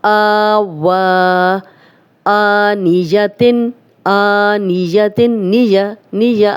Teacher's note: زیر اور زبر کو ذرا بھی لمبا نہیں کیا جا رہا، لمبا کیا ہو رہا ہے کھڑا زبر، اور حمزہ لمبا ہو رہا ہے کیونکہ اس پہ کھڑا زبر ہے، آنیتن۔